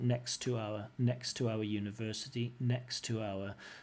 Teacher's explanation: she doesn't pronounce the two T's she pronounces it as one t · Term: connected speech